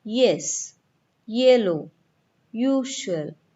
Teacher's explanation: When we say Y also, we start with the position of the vowel sound E.